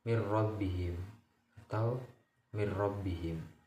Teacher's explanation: dengan memasukkan nun sukun atau tanwin ke dalam huruf-huruf hijaiyah tanpa disertai gunah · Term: idgham bila gunah